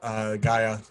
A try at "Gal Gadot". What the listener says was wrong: You want to say Gal Gadot, but the T is actually not silent.